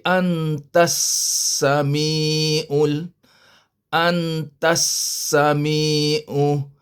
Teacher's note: memang tak bunyi lam tak ada tanda mati jadi tak bunyi yang bunyi Sin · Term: Idam Syamsiah